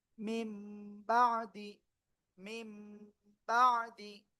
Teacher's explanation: মিম নুনজের মিন হওয়ার কথা, কিন্তু তারপরে বা আসছে, তাহলে উচ্চারণটা পরিবর্তন হয়ে মিম হয়ে যাবে।